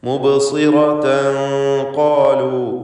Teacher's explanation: മുബ്സിറതൻ ഖാലു, ഇവിടെ സ്വാദിന് കസ്റാണ്, കുറഞ്ഞ തഫ്ഖീം നൽകിക്കൊണ്ട് സ്വാദ് തടിപ്പിച്ചുച്ചരിക്കുക.